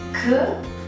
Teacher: we raise the back of the tongue to the soft palate